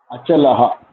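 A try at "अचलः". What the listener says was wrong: Yeah. Cha, la, and ha. Yeah.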